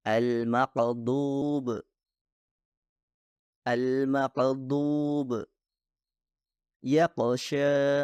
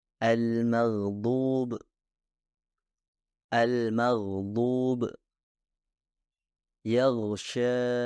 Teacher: suara gain seharusnya mengalir dengan lancar dan memiliki sifat kontinu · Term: ghain